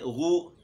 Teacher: اور اس میں پیش ہے، ہونٹ گول ہوں گے اس میں